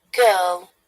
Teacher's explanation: this pronunciation is British pronunciation, which is why in most of the cases we do not pronounce letter R at all